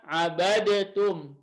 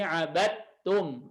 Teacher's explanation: Langsung ke huruf ta-nya aja. Ya, dalnya dimasukkan langsung dileburkan ke huruf ta. Jadi abadtum. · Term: Idgham mutajanisin shaghir